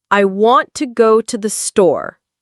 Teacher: Stress on want. Go. Store.